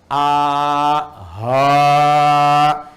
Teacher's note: hamzah dengan ha satu tempat. Enggak ada sekat a ha. Tapi ha nanti mengambil nafas cukup panjang.